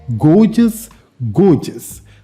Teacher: the first syllable stress correct pronunciation is gorgeous · The first syllable is stressed.